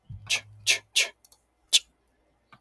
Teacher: There's a distinction between sh, which is a ch, and then you have tch. Tch is a hard ch. It's the post-alveolar affricate.